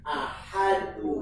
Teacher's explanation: Lafaz Allah didahului huruf kasrah maka tarkik.